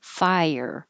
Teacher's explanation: Fire can be deceiving because it's a very short word, but it has two parts. Your tongue should rise and get very high, and then slide down and make a y.